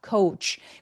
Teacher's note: 그래서 코치는 coach 우까지 느껴지게. 정말 다양한 스펠링인데 이중 모음인 거 느껴지세요?